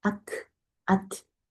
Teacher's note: 바람이 팍팍 나오면서 소리가 들리거든요. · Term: 함수